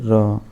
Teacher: लुंठित, लोडित तथा लुंठित, इसके मुख द्वार जीभ की नोक से शीघ्र ही बंद होता है और 2-3 बार खुलता है